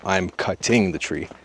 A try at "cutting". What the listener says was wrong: We cannot pronounce the word this way. We cannot say I'm cutting the tree. It's pronounced cutting. Move the stress to the first syllable, cut. Not cutting, but cutting. And in America, we change the T to a fast D when it's between vowels, like this. Cutting, cutting. Not cutting, but cutting. You can say, I'm cutting the tree.